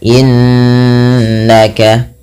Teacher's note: dibaca dengan bacaan gunna cara membacanya menahan bunyi suaranya sepanjang dua harakat innaka tidak hanya sekedar innaka tapi ditahan anta anta ya ada